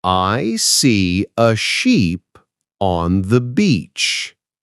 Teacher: In sheep, the vowel is long and smiling.